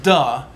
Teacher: there's not that aspirated there's not air coming out